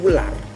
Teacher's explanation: huruf U seperti pada kata ular, bibir kita agak maju sedikit sehingga menjadi ular.